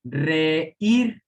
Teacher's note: Reír es aguda, tiene sílaba tónica en la última y termina en R y aún así lleva tilde.